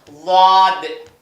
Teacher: நுனி நாக்கு மேல் பல்லு தாடை ஒற்ற மாதிரி